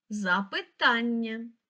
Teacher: наголос на третій склад